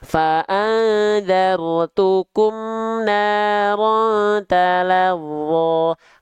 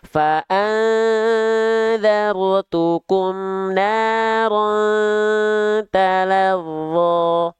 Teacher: Harusnya ditahan dulu 2 harokatnya kadar gunnah.